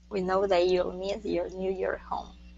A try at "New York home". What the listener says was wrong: Okay, New York home. Instead of New York, New York. Add that K at the end. New York home.